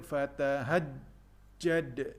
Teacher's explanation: Sempurnakan sabdu pada huruf jim dan disempurnakan juga qalqalah pada huruf dal.